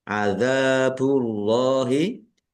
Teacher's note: Panjang dua harakat. Allahnya dibaca tebal karena harakat di depannya dommah. Lam fathah berdiri mad thobi'i.